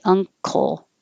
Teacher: your tongue goes up in the back for the ng combination and then releases for a k